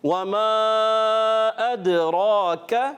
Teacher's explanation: یعنی کاف کو پر کر کے پڑھ دیتے ہیں، تو پر نہیں کرنا، ہم نے باریک رکھنا ہے۔